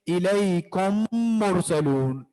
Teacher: यानी एक मीम को दूसरे मीम में दाखिल करके पढ़ेंगे। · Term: इदगाम